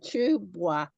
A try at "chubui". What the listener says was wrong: Not bois. I is E. I is E. No, it's chu, bui. I is E. Chu, bui. Bui. Bui.